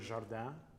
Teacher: That second vowel, that nasalized aa vowel